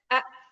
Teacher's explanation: kalau hamzahnya nggak dihentak-hentak tuh nanti dia jadi kayak ain, kurang kuat